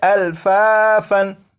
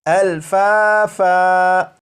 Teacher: جب یہاں پر وقف کریں گے تو دو زبر کو الف سے بدل دیں گے